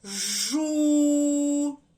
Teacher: він не пом'якшує звук Ж значить це звук твердий